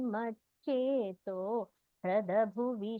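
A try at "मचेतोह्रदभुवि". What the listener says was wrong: Bhagini, Mache to Hrada Bhuvi. We should not split there. Mache to Hrada Bhuvi.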